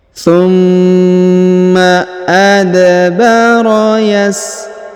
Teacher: da berharakat sukun maka kita pantulkan adbaro tumma adbaro Yas a huruf a dipanjangkan dua harakat karena di atasnya terdapat Alif kecil dan di depannya terdapat alif bengkok atau Alif maksurah tumma adbaro